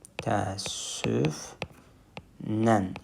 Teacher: Həm səs düşümü, ə-nin biri düşdü, həm də səs artımı n artdı.